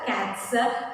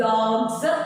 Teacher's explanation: ട് എന്നുള്ള sound voiceless ആണ്. അതുകൊണ്ട് നമ്മൾ അതിൻ്റെ കൂടെ ആഡ് ചെയ്യുന്ന പ്ലൂറൽ ഫോർമേഷനും വോയിസ്ലെസ് ആയിരിക്കണം.